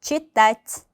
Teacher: 이 트의 발음이 조금 더 부드럽게 약간의 짧은 이 발음이 나기도 하죠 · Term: mягкий знак